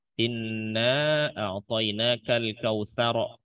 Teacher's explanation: Ra itu ketika baris atas tebal juga.